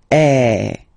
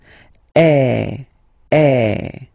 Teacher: the sound is really open, and normally your mouth should be opened a little bit more than with the accent aigu as well. Okay, so it goes like eh. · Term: accent grave